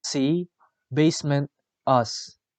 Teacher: The description of s is voiceless alveolar fricative.